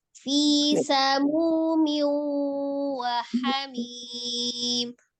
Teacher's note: Hati-hati di fi, tidak terlalu panjang ya. V-nya tidak dipanjangkan. 2 harakat saja.